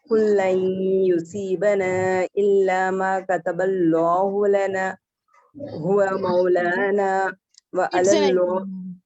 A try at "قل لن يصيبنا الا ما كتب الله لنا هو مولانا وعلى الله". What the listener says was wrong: Speed سے نہیں پڑھیں گے کیونکہ ایک حرف کو واضح کریں گے.